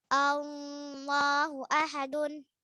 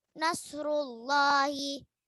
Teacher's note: lafaz Allah dibaca takhfim atau tebal jika didahului harakat fathah atau dhammah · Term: lafzul jalalah takhfim